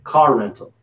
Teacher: there's no wall between car and rental, so we're going to carry the R a little bit here.